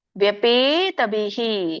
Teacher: ಅಲ್ಲಿ ನೋಡಿ ಮಧ್ಯದಲ್ಲಿ ವಿಸ್ಕಾರ ವಿಸರ್ಗ ಇರೋದ್ರಿಂದ ಬಿಹಿ ಅಲ್ಪವಾಗಿ ಹ ಉಚ್ಚಾರಣೆ ಮಾಡ್ಬೇಕು. ವ್ಯಪೇತಭಿ ಪ್ರೀತ ಮನಃ.